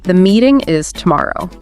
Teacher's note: hear how your voice naturally Falls at the end it's final definitive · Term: falling intonation